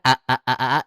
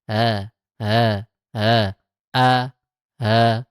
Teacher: Kalau a betul kan a a a aa itu dari pangkal tenggorokan keluarnya jelas a · Jadi ringan suaranya meringankan hamzah kedua dengan suara antara hamzah dengan ha atau hamzah dengan alif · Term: tahkik, tashil